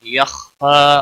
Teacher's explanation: مستعلیہ میں سے ہے، پر پڑا جائے گا، پھا کے اوپر کھڑی زبر ہے، ایک الف کے برابر کھینچ کر پڑھیں گے، وقف کی صورت میں بھی